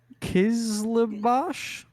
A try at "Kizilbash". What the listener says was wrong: No, the I is before the L, so it's Kizilbash.